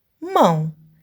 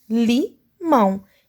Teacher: nasalização esse som meio puxando no nariz